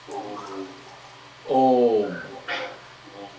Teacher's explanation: it usually ends in the nasalized sound like Om to the nose